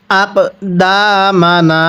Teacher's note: এই দালের মধ্যে টান দিব নুনের মধ্যেও টান দিব কারণ জবরের পরে খালি আলিফ এজন্য এক আলিফ টানতে হয়